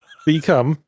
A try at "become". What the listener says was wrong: like you're saying the come of a bee.